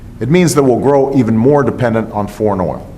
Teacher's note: It means, that's the Z sound. Why? Because as we said, the N is voiced.